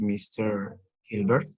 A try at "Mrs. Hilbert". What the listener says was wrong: ok, solo es Mister si no lleva S. Si lleva S es para una señora casada, Mrs.